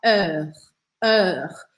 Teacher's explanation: abrir a boca como se você fosse falar um A e tentar falar O. Isso com aquele R arranhadinho do francês no final. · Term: cara de vômito